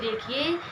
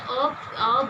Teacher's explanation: आप अ बोल के देखिए, इसको ऐसे नहीं समझ में आएगा, जब आप इसको बोल के देखेंगे तो ये आपको समझ में आएगा। इसलिए आप अगर अ बोलते हैं तो आपके जीभ का मध्य भाग इसमें प्रयोग होता है, इसलिए इसको मध्य स्वर कहते हैं